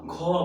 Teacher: दूसरा चौथा उच्चारण में हवा ज्यादा निकलती है। इसलिए इसको हम लोग महाप्राण बोले।